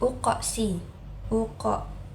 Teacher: qofnya ini dibaca Qalqalah sugro karena dia qalqolahnya berada di eh tengah-tengah ayat